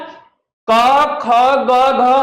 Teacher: क ख ग घ का उच्चारण कंठ से होता है